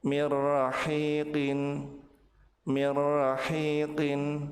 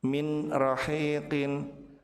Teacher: Apabila nun sukun bertemu dengan ra, maka nun dilebur ke huruf ra tanpa ditahan dan tanpa disertai dengan gunnah.